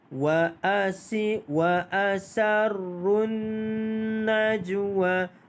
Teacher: Alif lam syamsiah, maka dia tidak dibunyikan alif lam tersebut.